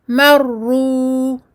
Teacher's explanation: on met l'accent sur le premier ra. Parce qu'on sait que quand il y a une shadda, il y a deux ra. Il y a un ra sakin plus un ra madmoum.